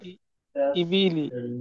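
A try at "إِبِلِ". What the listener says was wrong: হ্যাঁ, তাড়াতাড়ি পড়তে হবে, ইবিলি।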